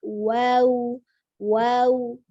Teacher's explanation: Wawnya 2 harakat, wawnya sukun tapi dimonyongkan bibirnya.